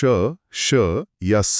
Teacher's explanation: श, श, स, ह इनको बोलते समय मुंह में असल में होता क्या है? जब आप श, श या स बोलते हैं तो आपकी जीभ हवा का रास्ता लगभग पूरा बंद कर देती है। लेकिन एक बहुत ही पतली सी जगह छोड़ देती है। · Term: ऊष्म व्यंजन